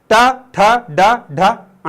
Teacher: तुम्हारे ऊपर वाले जो दांत हैं उसके थोड़ी सी ऊपर तुम्हारी जुबान टकराएगी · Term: मूर्धन्य